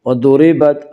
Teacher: ضاد کو پر پڑھیں گے، ضاد حروف مستعلیہ میں سے ہے